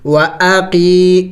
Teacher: یا مدہ یا ساکن سے پہلے اگر زیر ہو تو اس کو یا مدہ کہیں گے، اور یا مدہ کو ایک الف کے مقدار لمبا کیا جاتا ہے